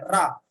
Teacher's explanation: लुंठित का मतलब होता है रा, जब आप बोले आपकी जीभ में लुंठना पड़ रही है रा, तो ये लुंठित हो गया।